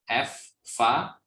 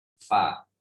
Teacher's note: mempertemukan antara bibir bawah dengan gigi atas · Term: huruf fa